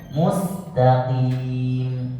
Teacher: Mus sama, sinnya kecilkan desisnya.